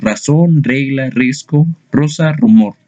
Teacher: Las palabras que tienen sonido vibrante múltiple en posición inicial de las palabras